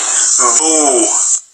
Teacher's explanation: the lips are pressed together and then released to make the B sound. · We pronounce the letter B by building up pressure between the lips and then releasing the air.